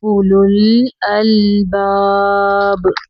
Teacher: ऊ को लंबा नहीं पढ़ेंगे